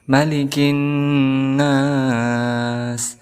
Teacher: ada huruf nun bertasydid, maka dihukumi sebagai gunnah, maka kita dengungkan 2 harakat